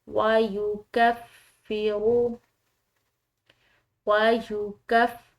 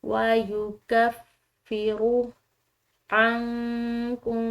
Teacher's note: فا مشدد ہے، اس کو دباؤ سے ادا کریں گے